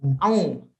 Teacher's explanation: Transisi antara hamzah dengan ain harusnya terlihat, cukup terlihat, mengingat a dengan a itu kan berbeda. Ya, jangan dilebur. Jangan seperti au.